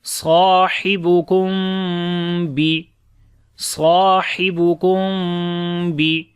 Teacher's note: Sahibukum, ha we read from the middle of the throat. After the meme sakin, the next letter is ba. We make ikhfai shafawi here, like the hiding sound of meme here.